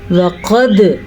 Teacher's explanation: وَقَدْ قاف موٹا اور دال پہ قلقلہ